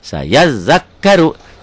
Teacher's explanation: Hukumnya ru tebel karena barisnya di atas. Saya zakkaru ronya tebel, tafkhim.